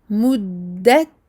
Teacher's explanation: on double le dal et on sort le petit souffle avec le ta qui porte un soukoun